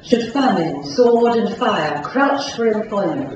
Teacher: people from the west of England, for example, would notice the R after the vowels